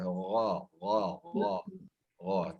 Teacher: Kalau mahraj huruf gha itu adalah huruf tenggorokan atas